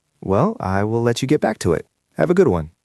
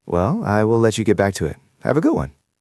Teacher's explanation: In the second version, your voice was a bit flatter and more direct.